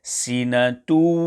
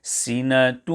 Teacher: There must be joining, but also a heavy nasal sound made, as follows: sinatun. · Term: idgham with ghunnah